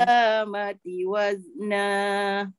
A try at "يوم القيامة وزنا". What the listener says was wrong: Tak jadi. Sebab uh, Datin dah dah setting dekat mati tu dia turun. Qiyamati. Ah tu tak moyang tu. Qiyamati wazna. Tolak atas balik.